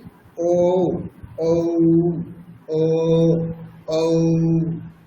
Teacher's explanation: এরকমই ও এটা ঠোট মিলে উচ্চারণ হবে কন্ঠ থেকে এবং ঠোট দুটি গোল আকৃতি হবে। তো সেইজন্য এখানে ঠোট যেহেতু স্পর্শ করছে পরস্পরকে সেজন্য অষঠ দেওয়া আছে। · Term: কন্ঠ অষ্ট, কণ্ঠ ওষ্ঠম